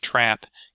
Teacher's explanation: some raising of the A vowel. So in something like trap, getting something a little bit more like trip, where that's higher up.